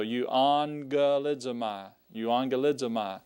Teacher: when you have the double gammas, you want to give it the NG sound there.